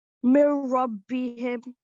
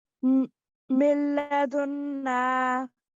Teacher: So all that happened was the ra and the lam became mushaddad, right? But the N disappeared completely. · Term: merging